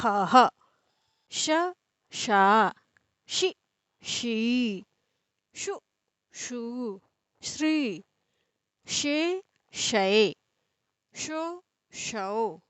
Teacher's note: इस श का उच्चारण तालू से होता है इसलिए इसको तालव्य श कहा जाता है